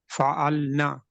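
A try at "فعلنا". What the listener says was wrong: ना को थोड़ा सा लंबा करेंगे, ठीक है जी?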